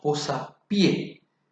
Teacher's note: Pero uniendo estas dos palabras tenemos posapié y la fuerza de la voz recae en la última